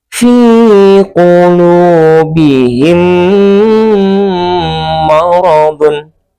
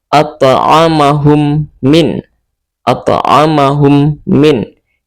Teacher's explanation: ketika mim mati bertemu dengan huruf mim ini, kita membacanya dengan cara didengungkan dan kita tutup bibir serapat-rapat mungkin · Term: idgham mimi